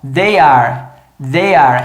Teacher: É um TH voiced, que o som parece o som do D, mas é um TH. E o posicionamento de língua de TH é a língua lá no dente, ó.